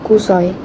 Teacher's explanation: Perkataan kusoi mengandung diftong AI yang gabungan vokal O dan I yang dilafazkan sebagai satu unit bunyi kusai atau kusoi dalam dialek Melayu Sarawak.